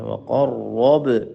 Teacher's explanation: وقرب با پہ جھٹکا دیں